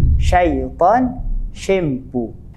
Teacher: Makhraj huruf shin adalah apabila lidah ditekankan hingga berdekatan dengan lelangit tengah. Dan bila kita sebut huruf shin, kita akan merasa hembusan angin di dalam mulut kita.